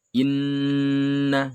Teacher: ada nun bertasydid bacaan gunnah. Ya, hukum bacanya gunnah mendengung 2 ketuk.